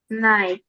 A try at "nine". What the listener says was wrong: come on pronounce correctly not nice but nine